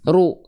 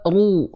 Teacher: yang pertama itu dilafalkan kurang tebal